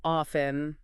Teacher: some people drop the T sound